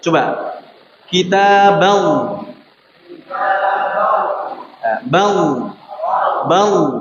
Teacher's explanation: Ba-nya langsung masuk ke lam dengan suara lam yang tebal.